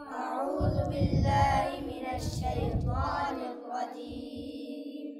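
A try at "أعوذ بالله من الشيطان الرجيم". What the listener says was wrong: আউযু বিল্লাহ, আউযু জাল, আউযু বলবেন না, জা বলবেন না, জাল জাল।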